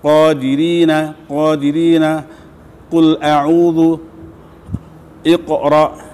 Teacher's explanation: Jika pangkal lidah ketemu dengan langit-langit agak ke belakang lagi dibanding kaf, akan muncul huruf qaf. Perhatikan, qaf itu pangkal lidah, bukan tenggorokan